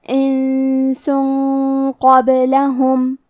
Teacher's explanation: کیونکہ حرف القاف حروف التفخیم میں سے ہے اور غنہ اپنے اگلے والے حرف کا حکم لیتا ہے تفخیم میں اور ترقیق میں، لہذا ہمیں یہ غنہ کو تفخیم سے ادا کرنا ہے، انسن قبلہم۔